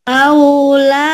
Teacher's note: Aunya jangan panjang. Aunya lin.